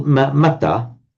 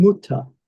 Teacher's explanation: originally it was mata, but the a has mutated to an u in some forms